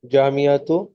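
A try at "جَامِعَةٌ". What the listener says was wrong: तनवीन है कि बगैर तनवीन के है? हाँ, तो जामियातुन पढ़ना है।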